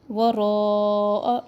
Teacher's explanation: مد متصل واجب، تین الف کے برابر لمبا کرے